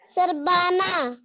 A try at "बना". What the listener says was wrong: बा पे आ की मात्रा है, बा है या बा है? तो क्या हो गया? बना, हाँ ये बना है, बा है, बा नहीं है, बाना, बाना में बा हो गया ना, ये बना है, बना रहे।